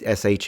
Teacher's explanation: it's not even a retracted S at the end as I was expecting this is a fullon sh sound